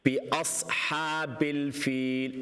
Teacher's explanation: After the ba, it's a hamza, so don't give it an ayn sound.